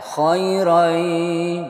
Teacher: ini tanwinnya masuk ke ya jadi bacanya khoiro yay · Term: Idgham Bighunnah